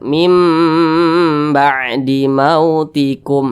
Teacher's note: dibaca menjadi mim mim dipanjangkan atau didengungkan kira-kira dua ketukan atau dua harakat m maum nah seperti itu kemudian di sini ada mim sukun